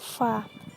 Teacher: Makhraj huruf fa terletak pada bagian dalam bibir bawah bersama ujung gigi seri bagian atas. Adapun cara mengucapkannya seperti F disertai suara nafas, yaitu fa.